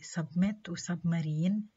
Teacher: B is nasally released when it's immediately followed by ma. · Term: nasal release